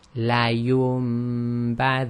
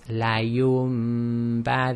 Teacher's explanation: Okay, so after the ya is a Noon Saakin, and then after the Noon Saakin is a ba. So the Noon Saakin is actually changed to a meme sakin, and that's done with nasalization. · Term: iqlab